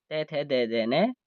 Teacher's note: क्योंकि इनका उच्चारण स्थान दंत है, इसलिए इनको दंत्य वर्ण कहते हैं, दांत होने के कारण।